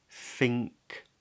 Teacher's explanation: The back of the tongue comes up, and then it's followed by a K. So the back of the tongue stays there and then drops suddenly.